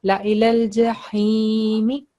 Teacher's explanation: Yeah, because this ha over here, this one is a thick letter coming voice from your throat, and it's kasra followed by ya sakin, so it will be 2 seconds